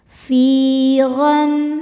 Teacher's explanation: Cara bacanya huruf fa panjang dua harakat.